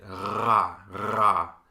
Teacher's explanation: This is your tongue, the back of your tongue against your uvula, the little hangy-downy thing in the back of your throat. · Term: uvular